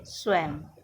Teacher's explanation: हिंदी में इसका उच्चारण शब्द में 2 स्थानों पर किया जाता है। क शब्द के अंत में आने पर इसका उच्चारण म के रूप में किया जाता है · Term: अनुस्वार